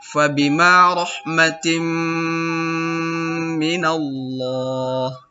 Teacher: Pada kata rahmatim mina. Jadi tim itu baris 2 bertemu dengan mim di depannya. Itu hukum bacaannya adalah idgham bi gunnah. Jadi didengungkan.